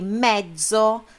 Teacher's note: Lembra que eu falei da dupla consoante? É só o sonzinho, fica aquele meio segundinho a mais, que ele fica um pouquinho mais forte